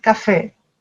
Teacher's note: La dernière syllabe accentuée.